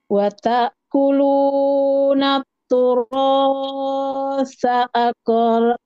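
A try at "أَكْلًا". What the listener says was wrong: Jangan mantul. Nah, itu tadi yang saya bilang ya, matnya mat semaunya. Nah, ini 2 harokat saja, jangan lebih.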